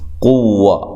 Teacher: واو کو ہونٹوں کو گول کرتے ہوئے لمبا نہیں کرنا